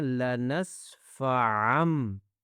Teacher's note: ہم نون کی آواز نہیں نکالیں گے، ہم نکالیں گے میم کی آواز